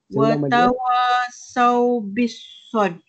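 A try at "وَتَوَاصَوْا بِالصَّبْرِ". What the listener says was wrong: Dia jangan berikan bil. Dia watawasau bis huruf sad tu masuk huruf sad. Ba dengan huruf sad kan. Watawasau bis huruf sad tu. Dia alif lam syamsiah.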